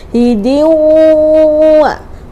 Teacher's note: Dengung. hidiwa, sambil masuk ke rongga hidung